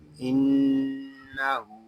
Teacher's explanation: نون مشدد میں غنہ ہوگا اور غننے کی مقدار ایک الف تک ہوگی، اور الٹا پیش اس کو بھی ہم ایک الف تک کھینچ کر پڑھیں گے